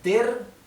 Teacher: La terminación ER en alemán se pronuncia EA. EA, ¿bien? O con una R apenas perceptible.